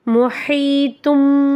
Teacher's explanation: ஓதணும் இந்த இடத்துல தன்வீனுக்கு அப்புறம் பா வருது இங்க எக்லாபுடைய சட்டம் வருது அப்ப அந்த தன்வீன்ல உள்ள நூனுடைய சப்தத்தை நம்ம மீமா மாத்தி குன்னா செஞ்சு ஓதணும்